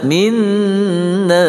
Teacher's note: Minna nun yang bertasydid. Wajibul gunnah wajib berdengung 2 harakah.